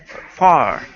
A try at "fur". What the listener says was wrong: you're skipping between saying the word far, like far away, okay, and then pronouncing a foo plus an so saying fur. Instead of fur, pronounce a word like fur, like her, okay? So imagine the word her, but just replace the H with an F, fur.